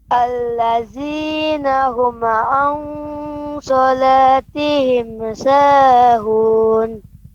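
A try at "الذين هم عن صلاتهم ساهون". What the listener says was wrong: Akan tetapi ini ada yang keliru lagi pengucapan huruf mimnya. Huma'a, huma'a. Mimnya jadi memantul. Huma'a. Allazina hum'a, hum'a ya. Allazina hum an salatihim sahun. Mim bukan huruf qalqalah ya. Mim bukan huruf qalqalah, jadi jelas an salatihim, tihim sa, tihim sa. Tidak boleh tihimesa, tihimesa.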